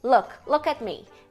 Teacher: é um U curto né então pode ver que a tua língua tá um pouquinho mais baixa